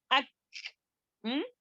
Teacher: جی کاف میں ہمس بھی ہوگا، جیسے کہ کاف پڑھتے ہوئے اک، وہ خلخلہ نہیں ہمس، یعنی کہ چھوٹی سی آواز آئے گی